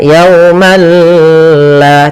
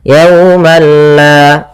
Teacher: Tapi perlu diingat, bila gunnah berarti tidak disertai dengan gunnah, sehingga langsung saja, tidak boleh ditahan